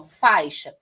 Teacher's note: o A é a vogal e o I é a semivogal, porque o I aqui tem um som mais fraco, né? E sempre que tiver uma vogal junto com o A é sempre vogal, significa dizer que a outra é semivogal. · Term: ditongo